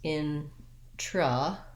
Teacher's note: I'm going to give you an intro where I use a clear O. Instead, that O changes to a schwa sound. It sounds like a. So I'm going to rewrite it as introvert, and that's going to help me be light and short on that second syllable, introvert.